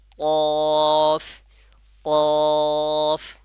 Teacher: জিহ্বার গোড়াটাকে উপরে নরম তালুর সঙ্গে লাগাইলে আপনার উচ্চারণটা সঠিক হবে। আর বলার সময় 4 আলিফ পরিমাণ টানবো, তাহলে সঠিকভাবে উচ্চারণটা হবে।